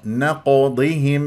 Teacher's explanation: مقلقله قلقل صغرى في وسط الكلام مفخمه مرتبه رابعه لانها ساكنه فانت يجب ان تاتي بتفخيم وقلقله لا تاتي بقلقله بقاف مرققه نقضهم هذا خطا نقضهم بهذه الطريقه